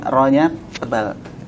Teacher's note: Nir tipis dulu baru ro-nya tebal.